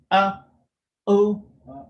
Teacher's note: your vocal cords start off closed and then they open up to say it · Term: hamza